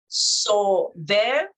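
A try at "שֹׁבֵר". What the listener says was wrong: No, it's a shin and then it's the O. So it's show there.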